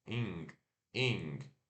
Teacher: E curto e o N que trava no céu da boca.